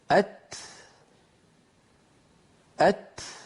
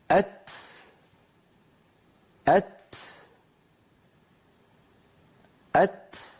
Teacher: إذن نرى مكتوب على اللوحة انطلاق النفس بعد انحباس الصوت في الحرف الشديد المهموس، جريان النفس بعد انحباس الصوت في المخرج عند نطق الحرف الشديد المهموس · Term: الهمس